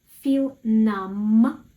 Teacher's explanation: We say m, no b.